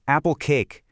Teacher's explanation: With apple cake, you've got two K sounds, so we lengthen it.